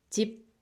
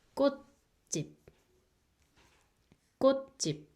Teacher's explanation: And then the next syllable, z, e, and then this b sound. If B is the final consonant, it makes P sound. So the second syllable makes 집 sound.